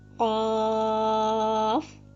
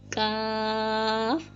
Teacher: قاف کے مخرج سے ذرا ہٹ کر تھوڑا سا منہ کی طرف جب آئیں گے تو وہاں سے کاف ادا ہوگا۔ منہ کی طرف آئیں گے کا مطلب یہ ہے کہ تھوڑا سا منہ کی طرف آ کر وہاں سے کاف کو پڑھ لینا ہے، ٹھیک ہے۔